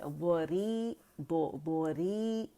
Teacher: بوری کیونکہ یہ زیر کے ساتھ ہے تو روانی میں یہ باریکی سے پڑھی جائے گی